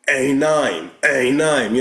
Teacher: The modern Hebrew, ein and aleph is the same thing. The Yemenites, the Jewish people that came from Yemen, they still have this guttural ein.